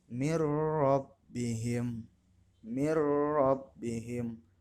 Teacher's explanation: Nun sukun bertemu dengan ro, salah satu huruf idgham bila gunah. Maka pembacaannya harus dimasukkan mir rabbihim, tetapi tidak berdengung. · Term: idgham bila gunnah